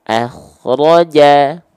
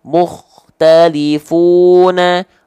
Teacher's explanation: Kho sukun didahului fathah harus dibaca tebal, sempurna.